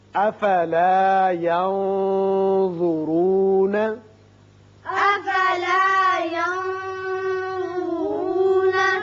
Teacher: یہاں نون پر اخفا کیجئے اور را پر پڑھیں گے